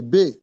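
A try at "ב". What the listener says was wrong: Non, non, il n'y a pas de point là-dedans.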